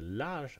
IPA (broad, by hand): lar